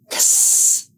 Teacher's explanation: It is two sounds together, ks, as in the word box. Both sounds are blocked. Ks is an unvoiced sound.